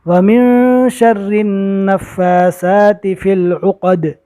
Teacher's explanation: یہاں پر فا اور سا کے اوپر کھڑا زبر ہے، کھڑا زبر کو 1 الف کے برابر کھینچ کر پڑھا جاتا ہے